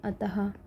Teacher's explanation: और आपके विसर्ग, इनका जो उच्चारण है वो हा की तरह ही होता है